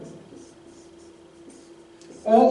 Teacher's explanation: ऊ का उच्चारण स्थान होता है ओष्ठ